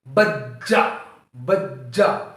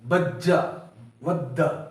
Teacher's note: جیم کے اوپر تشدید آنے کی وجہ سے جیم کو سختی کے ساتھ پڑھا جائے گا